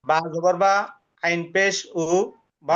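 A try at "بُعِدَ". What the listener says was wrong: আইনের উচ্চারণ আর একটু সুন্দর করে বলেন, আইন পেশ উ বা উ।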